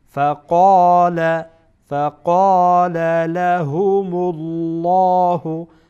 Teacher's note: لام جلاله در اینجا پر خوانده میشه